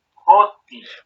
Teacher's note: el acento está en la penúltima, en la O, en la jo, en la sílaba jo, o sea, la primera sílaba de esta palabra. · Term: sílaba tónica